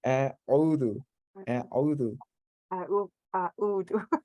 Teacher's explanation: Yeah, it is a bit of a difficult, like because you have a aleph, and then you have to switch over to the ayn